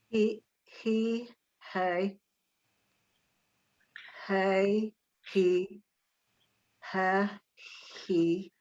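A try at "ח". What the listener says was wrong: And you have to have that guttural sound to it. It sort of sounds like you're making it a hey. So get that ch in there, all right?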